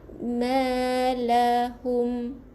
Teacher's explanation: Matikan dengan m, rapatkan bibir. Jangan buka nanti bunyi nun pula.